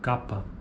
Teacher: símbolo K, oclusiva velar desvozeada. Exemplo, a palavra capa.